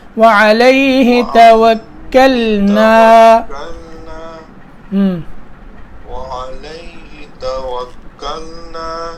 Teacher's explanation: تھوڑا سا لمبا کریں نون کو، نون کے بعد الف ہے حرف مدہ